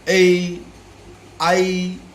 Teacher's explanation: ए और आई, एकार और आईकार, इन दोनों का उच्चारण स्थान कहाँ है? कंठ तालु, कंठ और तालु, ए आई।